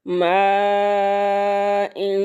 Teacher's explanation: مد متصل ہے، 4 الف کے برابر اس کو لمبا کریں گے